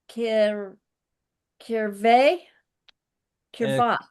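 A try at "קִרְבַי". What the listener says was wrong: Kiravai with the yod at the end.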